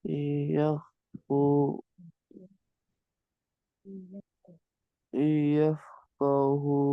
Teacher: nunnya seakan-akan enggak dibaca dan langsung masuk ke huruf ya dan dibaca dengung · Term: idgham ghunahnya